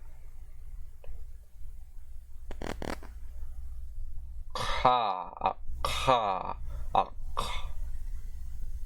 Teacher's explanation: voiceless uvular aspirated plosive consonant